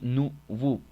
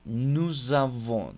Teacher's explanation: Pero cuando exista una vocal, en el caso de avon, enfrente, vamos a hacer la pequeña liaison uniendo las palabras la una con la otra